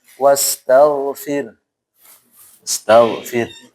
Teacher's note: Rohnya tipis, haknya juga tidak hilang.